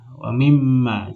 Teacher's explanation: Kemudian nunnya dihapus menjadi wa mimma, karena minnya mati. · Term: idgham